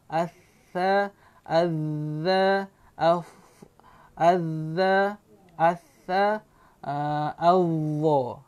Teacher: Keluarkan saja ujung lidah itu di antara gigi kacip atas dengan gigi kacip bawah.